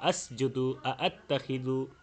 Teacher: তো এই দুইটা শব্দ ছাড়াও আরও যত শব্দ যে জায়গায় দুইটা হামজা একসাথে এসেছে সেখানে উভয় হামজাই তাহকিক করে পড়তে হয়, অর্থাৎ তাহকিক বলতে শক্ত করে সিদ্দত সিফাত আদায় করেই উচ্চারণ করতে হয়